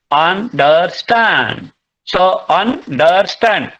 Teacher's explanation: So first two weak and next one is strong. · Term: anapest